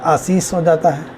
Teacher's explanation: जो तालव्य स है, मूर्धन्य स है और संघर्षी स है, इसकी जगह केवल स का उपयोग होता है, अर्थात सरौता के स, एक ही स का उपयोग होता है।